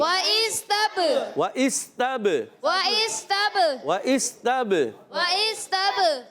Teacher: حمزہ کو سین سے ملائیں گے، حمزہ کو واضح کریں گے، وہ اس سین سیڑھی کے ساتھ، اور تا کو با سے ملائیں گے، تب با میں قلقلہ کریں گے